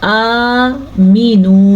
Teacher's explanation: حمزہ کے اوپر کھڑی زبر، اسے کھینچ کے پڑھیں گے